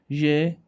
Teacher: الضيق يكون بين طرف اللسان back of alveolar ridge، المنطقة الخلفية مال alveolar ridge. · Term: strong friction sound